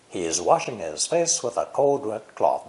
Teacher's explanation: the stressed words are washing and face